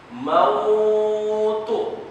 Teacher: Kalau waw sukun atau ya sukun didahulukan fathah, dia memang bukan mad tabi'i, tapi dia tetap dibaca dua harokat.